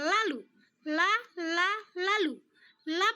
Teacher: posisi lidah seperti menekan sebentar langit-langit mulut kemudian melepaskannya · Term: lateral